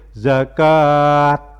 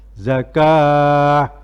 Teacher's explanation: Tapi karena ini kita baca waqaf, kita baca berhenti, maka setiap bacaan tak marbutoh itu kalau dibaca waqaf, dibaca berhenti, maka bersuara ha. Jadi wa aqimus sholata wa atuz zakah.